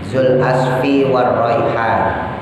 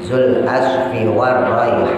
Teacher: Mewakafkan huruf nun sukun, sebelumnya ada huruf mat yaitu huruf alif. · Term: mat arid disukun